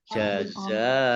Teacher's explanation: Mat wajib muttasil dibaca panjang 5 harokat.